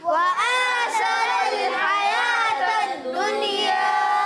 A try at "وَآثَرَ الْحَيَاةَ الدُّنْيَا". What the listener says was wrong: جی ہاں دنیا پڑھنا ہے، دنیا نہیں پڑھنا، نون میں قلقلہ نہیں ہوگا۔ وآثر الحیاة الدنیا،